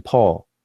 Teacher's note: it is actually a voiceless bilabial plosive. That is a more detailed scientific name for that letter P.